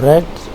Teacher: The second is R sound, where the tip of the tongue is raised, but it repeatedly touches the ridge while the air passes in front of it